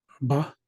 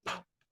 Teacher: So B is related to P because they're made the same way. The only difference is that B is voiced, P is voiceless.